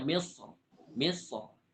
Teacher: misr boleh dibaca tebal boleh dibaca tipis